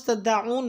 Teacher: لفظ تدعون میں عین کا مخرج وسط حلق سے ادا کریں